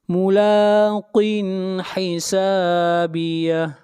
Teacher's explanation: یہاں پر اظہار ہوگا، اس لیے کہ تنوین کے بعد حروف حلقی میں سے حا ہے